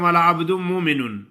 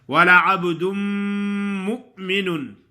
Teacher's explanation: حمزہ کو جھٹکا دینا ہے، حمزہ جھٹکے سے ادا ہوتا ہے